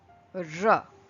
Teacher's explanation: you roll the tongue and then you speak and pronounce this particular letter R